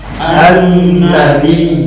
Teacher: ingat nunnya bertasdid agak lama agak lama ulang Annabiyina annajati afwan ulangi annati.